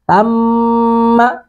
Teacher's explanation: ثم ثا اور ذال دونوں ہم مخرج ہیں تو اس کو بھی اسی طرح نرمی سے ادا کریں. ثم میم پر مشدد پر غنہ کریں